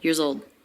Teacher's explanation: years old notice everything links together really smoothly the plural s in years is pronounced as a z and it links into the next words old